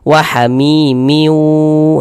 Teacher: Jadi bunyi tanwinnya ini dimasukkan ke huruf waw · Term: idgham bi gunnah